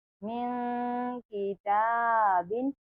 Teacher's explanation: यहाँ पर गुन्ना किया, इख्फा किया, नून साकिन की आवाज को छुपा दिया।